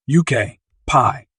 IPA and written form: oʊˈkɑːpiː (okapi)